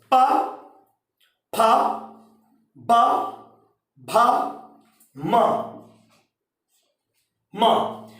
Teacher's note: दब्योष्ट का मतलब होता है वे वर्ण जो होंठ को दबाने से निकलते हैं, जिनके उच्चारण करने में होंठ दबते हैं